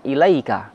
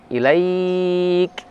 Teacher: Kalau berhenti maka di sana ada mad lin, ilaik. Bisa 2 harokat, bisa 4, bisa 6.